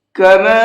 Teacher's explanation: کما، یہاں پر یہ چھوٹا مد ہے، اس چھوٹے مد کو 1 سے 3 الف کے برابر کھینچ کر کے پڑھیں گے